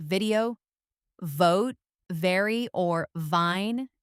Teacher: your top teeth should gently touch your bottom lip. As you push air out, your throat must vibrate. It's a continuous buzzing friction sound. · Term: V sound